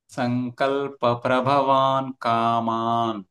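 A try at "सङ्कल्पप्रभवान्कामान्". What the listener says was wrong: మీరు కొంచెం ఇక్కడ గ్యాప్ అదేదో చేస్తున్నారు. సంకల్ప ప్రభవాన్ అంత ఒకటే స్ట్రెచ్ లో రావాలి. ప్రభ సెకండ్ బా. ఆ ట్యూన్ పట్టుకున్నాం అనుకోండి, పదం ఎక్కడ వదిలేయాలో ఎక్కడ స్ట్రెస్ చేయాలో తెలుసు. సంకల్ప ప్రభవాన్ కామాన్.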